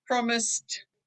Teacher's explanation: And Yeah, so just remember to drop the ed and change it to a t sound